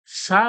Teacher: এর মত আওয়াজ হবে না ছয় এর মত আওয়াজ হবে কিভাবে জীবের আগালটা সামনের যে দাঁত রয়েছে দাঁতে ঠেকিয়ে হাওয়াটা সামনের দিকে বের হয়ে যাবে হাওয়াটা বার হবে জীবে লাগিয়ে সা বলবেন হাওয়াটা সামনের দিকে বের